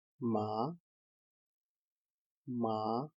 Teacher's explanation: Tone 1 is high and level. We can describe it as 5-5. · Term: first tone